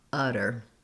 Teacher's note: the two t's in the middle of the word utter are a flap sound so it sounds like a d